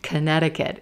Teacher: there's a C in there that we don't hear at all.